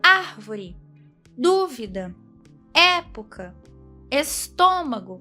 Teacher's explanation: A sílaba tônica dessas palavras é a antepenúltima. Sendo assim, essas palavras são proparoxítonas.